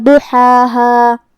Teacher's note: بات حروف التفخیم میں سے بھی ہے تو ہمیں اسے بھاری آواز میں پڑھنا ہے. ہا کو ہم حلق کے درمیان والے حصے سے ادا کریں گے، جو کہ اس کے بعد مد ہے تو ہم اپنی آواز 2 مد کے برابر لمبی کریں گے.